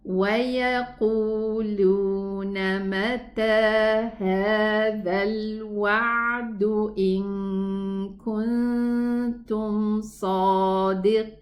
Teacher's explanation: the ya is gonna be extended 4 counts because it's mad arid lis sukoon, and the noon has a sukoon